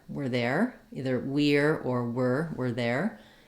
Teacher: the r can get reduced more to an ER or it gets contracted